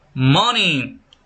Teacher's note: For example, money the stress is on the first syllable.